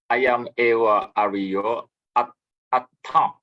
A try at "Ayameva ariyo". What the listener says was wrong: See, atta, T, not the. Like this one, T, and then this one is T. Yeah, T.